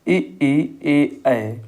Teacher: ये जो है अग्र स्वर के अंतर्गत आते हैं